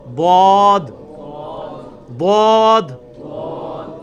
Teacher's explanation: تو یہ لفظ ہے ضاد. ضاد یعنی لیفٹ زبان کا کنارہ اوپر کے دانتوں کی جڑ میں لگانا ہے، یا دونوں کو پیرلل میں دونوں کو بھی لگا سکتے ہیں.